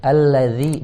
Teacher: Zi tipis, keluarin lidahnya sedikit. Zi jangan dari kedalaman, kalau kedalaman jadi tebal. · Ladzi, ada yang baca gini, alladzi hum fi, padahal alladzi keluarin sedikit lidahnya. Alladzi, jangan alladzi itu tebal, harus tipis